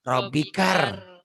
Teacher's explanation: Kenapa robikal? Kan itu alif lam samsiah. Lamnya nggak dibaca. Robikar. Inna ila rabbika.